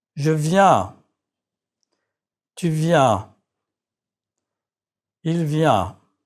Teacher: Remember to let air escape through your nose and your mouth. Your mouth is slightly open and your lips are stretched in a smile. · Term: nasal vowel